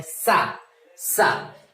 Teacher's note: जिह्वा हमारी दांत के पास स्पर्श करती है, दांतों के बीच स्पर्श करती है, सा। लेकिन ध्यान रहे कि इसके उच्चारण में आपको बहुत सावधानी बरतनी है।